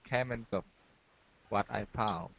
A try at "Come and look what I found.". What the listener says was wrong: Excellent. Excellent.